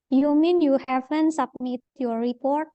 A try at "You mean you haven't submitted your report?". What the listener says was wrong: remember, when it's TED, we say the TED clearly. You haven't submitted. your report.